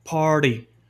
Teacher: esse T vira quase um D, party. Isso é complicado de fazer para algumas pessoas, mas no sotaque britânico, esse tem tensões de T e esse R antes de consoante, ele não é pronunciado.